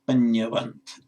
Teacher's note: If you add the vant suffix, the long a shortens to a